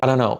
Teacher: when you speak quickly it's really a tap not a d